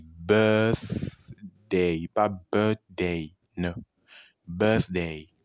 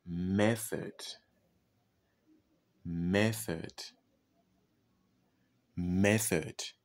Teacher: lorsque le TH est en milieu de mot, il ne se prononce pas comme un voice sound, mais plutôt un unvoiced. Unvoiced ou voiceless.